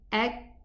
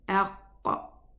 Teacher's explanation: the furthermost part of the tongue strikes against the soft tissue and the hard tissue. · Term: kaf